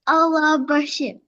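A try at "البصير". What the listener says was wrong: It's not, yeah, we say Basir, not Bashir, okay? Allah al-Basir.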